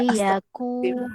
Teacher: Liyaku mad asli waw dibaca panjang 2 harakat.